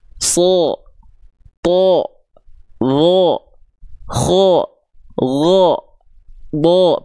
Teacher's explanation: apa Huruf Shad huruf Shad termasuk ke dalam huruf yang tebal ketika huruf SH dilafalkan berharakat fathah maka dia akan terdengar seperti vokal o · ketika huruf-huruf hijaiah berharakat fathah dan dibaca dengan terdengar seperti vokal O berarti tandanya dia termasuk ke dalam huruf yang tebal